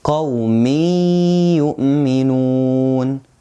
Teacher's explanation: As you see, قَوْمٍ, it ends with kasratan, but there is ya comes after these kasratan. So we merge the kasratan into the ya and we don't say the kasratan clearly, because ya is one of the idgham letters and it is with ghunnah.